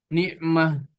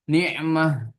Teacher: kalau tak marbuto hilang taknya tapi seperti ha suaranya